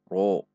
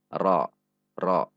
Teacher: dibaca tafkhim namun dengan tidak membulatkan bibir